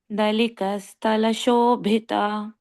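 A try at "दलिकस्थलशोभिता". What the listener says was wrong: This tha also you have to stress. Dalika Sthala Shobhita.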